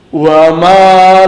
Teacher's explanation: Jadi ketika membacanya seakan-akan seperti mim double dan harus didengungkan, ditahan sebentar. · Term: idgham mimi